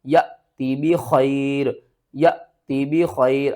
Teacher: الف والی حمزہ ساکن ہو رہی ہے تو اس کو بھی ہم نے جھٹکے کے ساتھ پڑھنا ہے